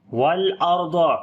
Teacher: اوپر جزم ہے، اس سے پہلے زبر ہے، اس وجہ سے ضاد کو بھی موٹا پڑھیں گے، صفت استعلا ہے اس کے اندر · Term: را کو موٹا